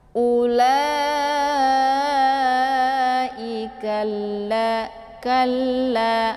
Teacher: Jadi memasukkan ka ke dalam bunyi la. Cara bacanya cukup ditekan saja tanpa harus ditahan ya. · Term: idgham